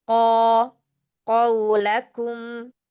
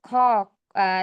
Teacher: Qofnya jangan ada hamznya.